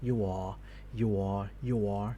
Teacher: You just you just hear you are there almost no R involvement and this makes the vowel looks a little bit over elongated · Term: weak R transition